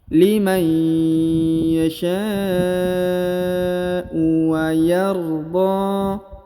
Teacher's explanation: Huruf dha dipanjangkan 2 harokat karena di atasnya terdapat alif kecil dan di depannya terdapat alif maksurah atau alif bengkok.